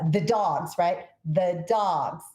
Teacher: your voice goes up for dogs